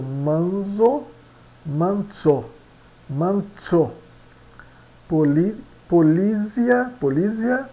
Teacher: Z é pronunciado como TS